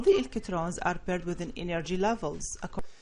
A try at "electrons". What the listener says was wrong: So I think you're saying electrons, but we don't really pronounce the R as hard as you're doing, so I would just say electrons.